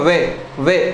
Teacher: हमारे ऊपर वाले दांत और नीचे वाले होंठ मिलेंगे